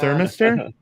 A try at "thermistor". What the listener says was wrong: You're putting the improper emphasis on the wrong syllable. Thermistor, not thermistor.